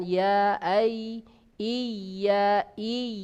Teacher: Kemudian yang ketiga, ya, sama, ada tekanan di bagian tengah lidah, ya, menekan ke atas, ke langit-langit ya, sejajar di atasnya, tetapi tidak sampai nempel kuat dan agak renggang juga daripada huruf shin.